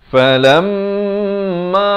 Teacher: di sini kena dengungkan dua harakat wajibul ghunnah